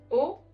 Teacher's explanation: O, which is very straightforward without any diphthongs